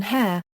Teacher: a closer, further fronted sound as in hare